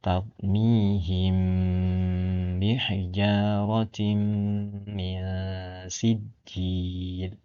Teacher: Nah, didengungkan di bibir. Mim mati ketemu dengan ba. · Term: ikhfa syafawi